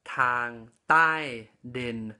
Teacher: So I'm going to talk about another consonant that we don't have in English, which is ba tao. So this consonant is produced from the back of your upper teeth by placing your tongue on it, and it is in between the D and T consonants we have in English